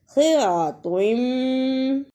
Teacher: ہدیہ صراطم، اسے صراطم نہیں پڑھنا، صاد کی جگہ پہ سین کی آواز نہیں آنی چاہیے